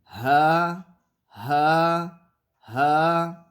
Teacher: ہا کا مخرج ہے اقصی حلق کا وہ حصہ جو سینے کی طرف ہے، اس سے ہا ادا ہوتا ہے۔